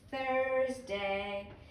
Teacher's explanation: But when we get to Thursday, you have to stick out your tongue and blow air.